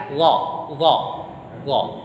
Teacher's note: Ujung lidah ini di langit-langit, dekat dengan gigi seri atas pangkal ini kan. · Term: huruf dha